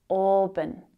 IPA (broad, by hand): ˈɔːbən